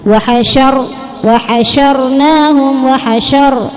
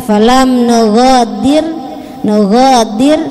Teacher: wa hasyar ro-nya dibaca tebal, tapi ketika falam nughadir dibaca tipis